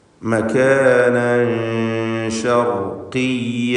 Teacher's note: മകാനൻ തൻവീനിന് ശേഷം സീൻ വന്ന കാരണത്താൽ ഇഖ്ഫാ ഹഖീഖി നൽകി മറച്ചു മണിക്കുക, അവ്യക്തമാക്കി മണിച്ചുച്ചരിക്കുക.